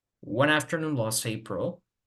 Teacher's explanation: no pronuncio la T de last. Esto es la omisión.